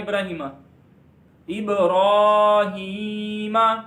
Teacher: را کے اوپر کھڑی زبر ہے، اس کو موٹا پڑھیں گے اور اس کو ایک الف جتنا لمبا کریں گے. کھڑی زبر کو ایک جتنا لمبا کرتے ہیں.